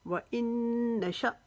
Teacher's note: یہاں پر جھٹکا دیا جائے گا کیونکہ یہ حمزہ جو ہے یہ ساکن ہو گیا ہے اور اس کے اوپر جھٹکا دے کر پڑھا جاتا ہے۔